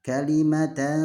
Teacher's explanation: kita samarkan antara n dan eng. Jadi dengan cara membuka mulut kita sedikit dan tidak menempelkan lidah kita kemanapun. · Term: ikhfa